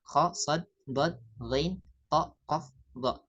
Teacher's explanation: ketika huruf-huruf ini berharakat fathah maka vokalnya bukan A tapi vokalnya o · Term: huruf-huruf istila